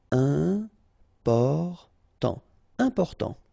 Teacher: you've got this EM, and after that it's a consonant, so it is here nasal